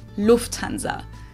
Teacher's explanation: English people usually say Lanza but in German we say Lanza so the emphasis on the first syllable